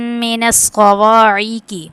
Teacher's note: اب یہاں پہ جو ہے نا اس میں من الصواعق پہ اسقاط کو موٹا کریں گے، موٹا کر کے پڑھیں گے، اور الف سے پہلے زبر ہے تو حروف مدہ میں سے اس کو 1 الف یعنی 2 حرکات کے برابر کھینچیں گے